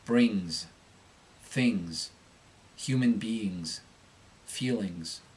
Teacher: ING-S endings are pronounced ING-Z. This change will mostly occur on unstressed syllables, so be sure to be subtle, keeping the volume of the change the same as the rest of the word.